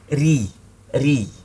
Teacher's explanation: Lidahnya jangan dinaikkan di pangkalnya tapi diturunkan, istifal istilahnya. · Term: tipis